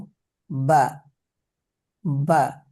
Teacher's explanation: বা দুই ঠোঁটের ভিজে জায়গা হইতে উচ্চারিত হয়